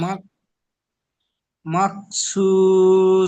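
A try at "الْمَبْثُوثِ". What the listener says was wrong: মাহ নয়, মাব, মিম বা জবর মাব।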